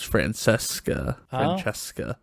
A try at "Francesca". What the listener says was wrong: Yeah, see, the Italian, those C's make ch sounds. It's Francesca. No, only the C's and the E's.